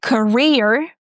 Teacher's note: In the word career, we have a shwa sound in the beginning, ca ca, and we stress the second syllable, career.